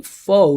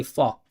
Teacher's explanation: a lot of times you guys don't say fo, you guys say f